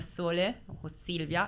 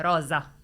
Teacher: le S anche in italiano possono essere pronunciate sia S come sole o Silvia e Z come rosa